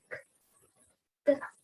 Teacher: Velar contact between the tongue and the soft palate